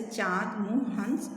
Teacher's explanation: अनुनासिक का उच्चारण नाक और मुंह से होता है